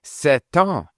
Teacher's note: So if you say 7 ans, what tends to happen is that the T is attached to the vowel coming in the next word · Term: liaison